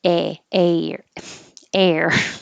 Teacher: the h is silent you start with the vowel